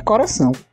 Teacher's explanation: a sílaba pretônica tem a vogal média baixa posterior